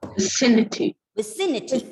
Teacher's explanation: The stress is on the third last syllable.